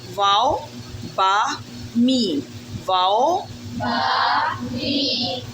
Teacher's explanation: ये हरूफ दोनों होठों से अदा होते हैं